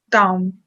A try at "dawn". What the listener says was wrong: Ah, I see you putting your lips together. It doesn't end with an M. You don't put your lips together here. You just say dawn.